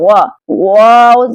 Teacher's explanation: دونوں ہونٹوں کو گول کرنے سے واؤ ادا ہوتا ہے۔ دیکھیں دونوں ہونٹوں کو گول کریں۔ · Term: واؤ غیر مدہ